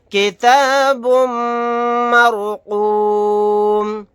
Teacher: میم مشدد ہے، یہاں پر غنہ کر کے پڑھیں گے، رائے ساکنہ کو موٹا یعنی پر پڑھیں گے کیونکہ اس سے پہلے زبر ہے، قاف کو موٹا یعنی پر پڑھیں گے، میم کو ساکن بنا کر پڑھیں گے آیت کرنے کی صورت میں۔